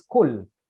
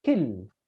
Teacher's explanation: In the Jewish dialect, kil. Yeah, so it is what we call a shva, a mid-central vowel